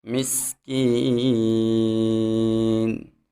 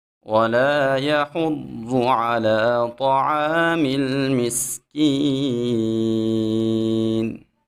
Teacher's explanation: سین میں خوب سیٹی پیدا کریں گے